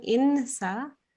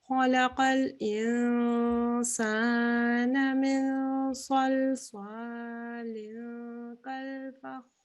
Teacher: it's not very clear N sound. You do it for 2 seconds and it's a partially hidden noon. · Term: ikhfa